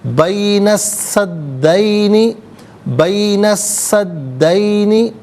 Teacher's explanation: سین کی آواز کو ادا کیا جائے گا، لام کی آواز ادا نہیں کی جائے گی. سین حرف شمسیہ ہے. · حرف شمسیہ وہ حرف کہ جس پر الف لام ہو لیکن لام کو پڑھا نہ جائے. تو ناظرین سین اور دال دونوں پر تشدید ہے، دونوں مشدد ہیں، تو دونوں کو جماؤ کے ساتھ پڑھیں گے